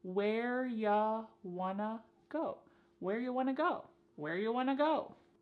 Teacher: You becomes ya, and want to becomes wanna.